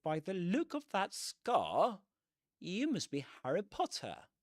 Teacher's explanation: They don't pronounce the R at the end of scar.